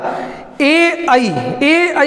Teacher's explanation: इसमें हमारे जो ध्वनि है कंठ और तालु को स्पर्श करते हुए बाहर निकलती है, इसलिए इनका उच्चारण स्थान हो गया कंठ तालु में।